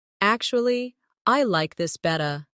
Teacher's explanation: Notice how better sounds like betta in natural speech.